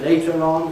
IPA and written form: ˈleɪtər ˋɒn (later on)